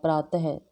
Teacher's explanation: last में अ के बाद विसर्ग लगा जाता है, ये होता है अह